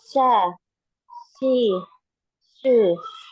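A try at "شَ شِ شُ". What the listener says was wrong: Tengah lidah. Tengah lidah. Tengah lidahnya naik, dinaikkan ya. Kemudian ada alirannya, ada aliran suaranya dulu ketika kita mau mengucapkan huruf shin ya. Jadi bukan langsung sha, shi, shu, tapi ada sha, shi ya, karena ada penyebaran udara di dalam mulut ya.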